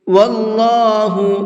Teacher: اللہ کے لام کو منہ بھر کے پڑھیں گے